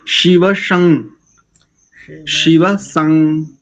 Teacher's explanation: शिव में तालव्य और संग में दंत्य। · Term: दंत्य सकार